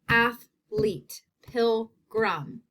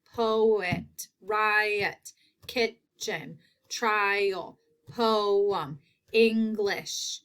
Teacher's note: there are two parts to each word, and the emphasis is in the first syllable.